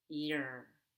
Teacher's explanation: Make sure you pull your tongue backward for the ER.